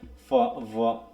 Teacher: when the lip lower lip approaches the upper front teeth, ল্যাভিওডেন্টাল sound produce